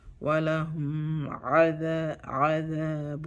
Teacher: The troll letters are 6, and ayn is one of them. The nun show itself really clearly. Idhar.